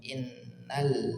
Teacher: ada Nun bertasydid didengungkan dua harakat Oke in dengungkan dua harakat masuk ke huruf lam sukun Nal